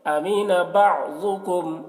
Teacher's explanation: ضاد کو پر پڑھیں گے کیونکہ ضاد حروف مستعلیہ میں سے ہے۔